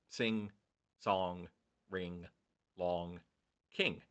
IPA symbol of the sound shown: ŋ